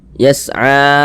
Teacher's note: a dibaca panjang, mad tabi'i panjangnya 2 harokat